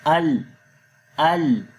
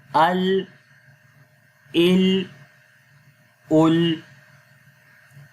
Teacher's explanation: اور وہ کیسے ہوتا ہے کہ جب ہم ال پڑھتے ہیں تو زبان کی نوک سامنے مقابل کے جو تالو ہیں، دواحک سے لے کر ثنایا تک کے جو تالو ہے وہاں پر جب لگے گی تو یہ آواز آتی ہے ال ال۔ تو یہ آپ نے یاد رکھنا ہے، یہ لام کا مخرج ہے۔